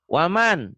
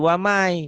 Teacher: Waman, jadi wamai, bunyi N-nya hilang, melebur ke Y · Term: idgom